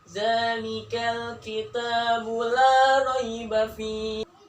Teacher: bagian lanya itu bagian lidah tengah nih di bagian ujungnya itu bertemu dengan gigi geraham yaitu di atasnya